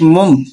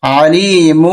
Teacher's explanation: دو پیشوں میں سے ایک پیش پڑھیں گے اور میم کے ساتھ ملا دیں گے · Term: اقلاب